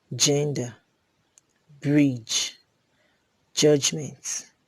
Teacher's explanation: voiced post-alveolar affricate examples are gender bridge judgment